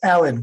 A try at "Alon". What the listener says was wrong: Yeah, it's pronounced Alon, but yeah, good to be Yeah, there's an accent on that second A.